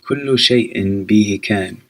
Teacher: Notice I'm not pronouncing harakat, vowels, right before a comma or a period. You only pronounce if they are not at the end of a phrase.